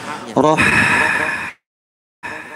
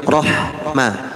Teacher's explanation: pas ha sukun itu lebih mengalir suara ha-nya